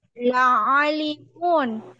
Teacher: Ainnya jangan dipanjangkan juga, pendek ainnya.